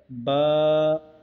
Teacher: बा का मखरज दोनों होठों के तर वाले हिस्सा है